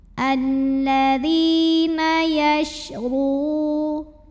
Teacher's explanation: RO di sini ada hukum mad namanya Mad Thobi'i zohiri karena ada wau sukun yang sebelumnya berbaris damah maka huruf RO dipanjangkan dua harakat saja · cara bacanya ro dibunyikan dengan menebalkannya. pangkal lidah kita naikkan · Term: tafkhim